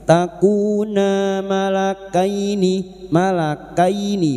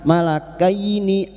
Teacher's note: fathah bertemu ya sukun kita lunakkan